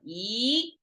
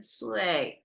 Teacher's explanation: So when we have falling tone after the E, I mean, E is its neutral dictionary pronunciation, because E by itself, without anything else, without context of this word, it's just E flat tone. Now, when it has a 岁 falling tone after it, that's when we rise it.